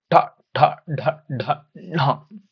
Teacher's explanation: ರೀತಿ curve shape ನಲ್ಲಿ ಇದೆಲ್ಲ ನಮ್ಮ ಮೇಲ್ಭಾಗ ಜ ಅಲ್ಲ ಕೆಳಗಡೆ ಅಲ್ಲ ಮೇಲ್ಭಾಗದ ಮಧ್ಯ ಭಾಗದಲ್ಲಿ ನಮ್ಮ ನಾಲಿಗೆ ಟಚ್ ಆಗುತ್ತೆ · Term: ಮೂರ್ಧನ್ಯ